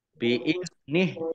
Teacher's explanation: Biizni zal sukun ya bukan kolkolah jangan dipantulkan. Biiznih dibaca wakof, nihnya dibaca pendek karena tidak ada tanda panjangnya